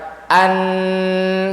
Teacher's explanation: huruf nun itu dua makhrajnya ujung lidah ke atas dan rongga hidung ngalir suaranya